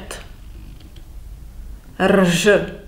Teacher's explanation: The most important and perhaps a little bit off-putting alien in Czech language is R, adorned with the inverted circumflex, which is pronounced R, R. It represents the raised alveolar non-sonorant trill, which will not help you very much either.